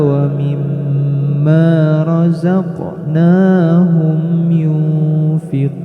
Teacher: Mimma dibaca gunnah. maksimal 3 ketukan. · ada huruf qaf yang diberi sukun, ini termasuk huruf qalqalah, maka silahkan diperjelas huruf qalqalahnya. Ketika di pertengahan maka kita sebut sebagai qalqalah sugro, dan jika di akhir maka kita sebut sebagai qalqalah kubro.